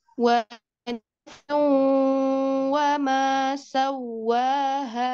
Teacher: waw itu adalah dua bibir yang dimonyongkan atau dua bibir yang dihimpun